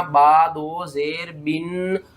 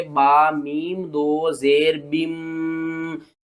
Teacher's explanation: نون ساکن اور تنوین کی آواز کو میم کی آواز میں بدل کر پڑھنا ہے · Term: اقلاب